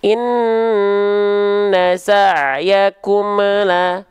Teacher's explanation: Terindikasi di ujung pelafalan ada bunyi eu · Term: mantul